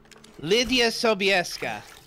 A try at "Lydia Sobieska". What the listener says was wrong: That's very nice. That's very close. Lydia Sobieska, Lydia Sobieska. Yeah, pretty much. Your S is a bit more, I don't know, soundy pronounced, whereas in Polish it's more of a Slavic sound. But yeah, close.